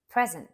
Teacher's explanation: present stressed on a first syllable is a noun · Stressed on a first syllable is a noun, and it means a gift or a current time. You could say, I received a wonderful present for my birthday.